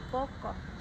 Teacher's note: bunyi yang dihasilkan dengan cara posisi lidah agak merendah sehingga agak menjauhi langit-langit keras caranya rahang bawah menjauh dari rahang atas di bawah posisi Netral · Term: bunyi agak rendah